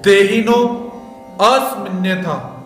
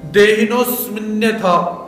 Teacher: यदि आप तोड़ोगे तो अ का उच्चारण आपको करना पड़ेगा। अगर आप नहीं तोड़ते हो तो अ का आधा उच्चारण